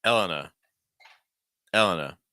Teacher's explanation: stress the first syllable generally